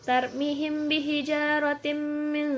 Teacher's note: apabila mim yang mati bertemu dengan ba cara membacanya dengan menyamarkan mim sukun di bibir dan didengungkan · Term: Ikhfa Syafawi